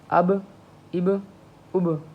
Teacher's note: حمزہ زبر با اب، حمزہ زیر با اب، حمزہ پیش با اب، اب اب اب. ہونٹوں کو ملانا ہے، ذرا ابھارنا ہے، جھٹکا سا دینا ہے، یوں اچانک جھٹکا دینا ہے، ٹھیک ہے. تو یہ چیز ہے، اسے ہم قلقلہ کہتے ہیں.